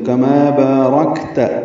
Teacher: کاف باریک ہے، ما الف مدہ ہے، 2 حرکات لمبا ہے، بارکت میں با الف مدہ ہے، 2 حرکات لمبا ہے ، را پر ہے، کاف سے ملائیں گے، کاف ساکن ہے، · 2 حرکات لمبا ہے، را پر ہے، کاف سے ملائیں گے، کاف ساکن ہے، اس پہ ہمس ہے اور تا پر زبر ہے، یہ جلدی پڑھیں گے